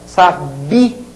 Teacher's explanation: Uma das duas vogais sendo tônica, sabia, esse I é tônico.